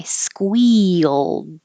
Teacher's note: this looks like one syllable but it's mostly two because your tongue is going high for the E and then sliding down for the Y